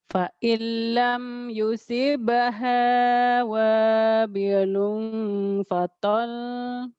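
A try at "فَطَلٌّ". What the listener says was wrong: Fa illam yusibha wabilun fatal. Falnya jangan ditahan. Beda dengan nun ya. Fatal gitu aja. Jangan ditahan. Kalau nun baru nun dan mim di ujungnya baru. Wabilul fatal. Tol gitu. Jangan ditahan.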